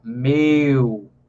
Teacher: Pode perceber, se você pronunciar a palavra meu, então pode ver que o som do E para o U tem uma caída na altura do som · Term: ditongos decrescentes